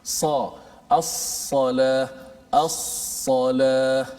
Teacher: Bila sebut ni, suara dia terhimpit ataupun terkurung, terperangkat antara lidah ke langit atas. Sebab dia terangkat. · dari sudut istilahnya terangkat lidah menutupi langit-langit semasa menyebutnya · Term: sifat itbaq, itbaq